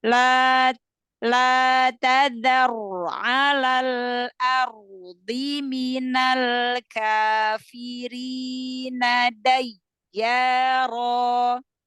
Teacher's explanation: Tafhimkan angkat pangkal lidah takrir walaupun dia nggak berlebihan takrirnya dengan getaran yang ringan tetapi tetap tampakkan. Jadi jangan ngerem, jangan la tadzar ala kayak ngambil nafas, jangan mencuri nafas. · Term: ro sukun